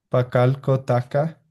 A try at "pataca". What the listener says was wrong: No, pataca, pa. sea, te estás comiendo la pa. Aquí está, ¿no ve? Pataca. ¿No ve?